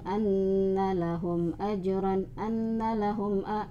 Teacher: ada ghunnah tapi belum sempurna, harus ada an di hidung